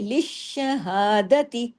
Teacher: آگے دیکھیں لشہادتی، لش، ایک شین لش اور پھر شہا دوسرا شین. شین ڈبل ہے، شین تشدید والا ہے، شین باریک ہے، لام باریک ہے، ہا باریک ہے، دال باریک ہے، تا باریک ہے.